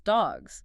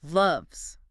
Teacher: Next is the voice counterpart, the buzzing Z sound. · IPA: /z/